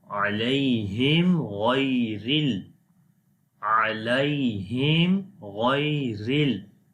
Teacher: after the meme sakin the next letter was ghain. So that's why we also make izhar shafawi.